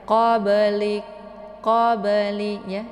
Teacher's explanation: cara bacanya itu dipantulkan secara pantulan ringan. Qablik, qabli ya. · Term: qalqalaf sughra